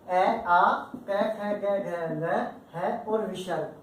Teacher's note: जब भी हम इन वर्णों को बोलते हैं तो हवा जो है मुख की, वो बिना किसी अवरोध के, बिना कहीं रुकावट के क्या है? सीधी कंठ से बाहर आती है। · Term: कंठे वर्ण